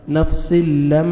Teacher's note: میم مشدد ہے, غنہ کریں گے, آگے الف مد ہے, 1 سیکنڈ آپ نے میم کو کھینچنا بھی ہے